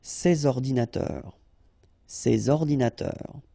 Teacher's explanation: you should make the liaison between S and O, ces ordinateurs, ces ordinateurs.